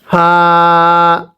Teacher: ফাটা উচ্চারণের সময় আপনার ঠোঁটের মাঝখান থেকে একটা বাতাস বের হবে